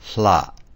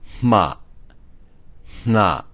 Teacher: the first consonant and the last are aspirated with air coming through the mouth, passing out through the mouth. However, the middle 2 are aspirated with air coming out of the nose